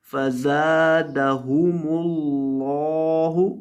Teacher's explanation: اور لفظ اللہ کے لام کو موٹا کریں گے